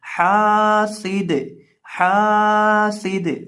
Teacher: دال کو ہلائیں گے کیونکہ یہ حروف قلقلہ میں سے ہے